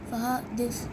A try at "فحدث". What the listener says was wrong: حادث نہیں ہے، حدث فحدث.